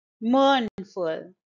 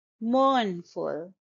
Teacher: it's a two syllable word and the stress is on the first syllable